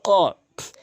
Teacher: কফের উচ্চারণ হচ্ছে জিহ্বার গোড়া উপরে তালু থেকে, জিহ্বার গোড়া থেকে উপরে তালু, কফ ধাক্কা দিয়ে, আর কাফটা জিহ্বার গোড়া হতে একটু আগে বাড়াইয়া।